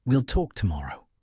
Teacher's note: That downward inflection makes the statement feel final, authoritative, closed to debate. It's not a suggestion. · let your voice fall at the end, dropping in pitch as you reach the final word